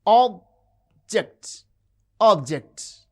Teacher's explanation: The first syllable has prominence, it has extra force and full vowel